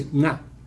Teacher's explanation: One notorious thing about Navi is that it has this NG sound at the beginning of a word.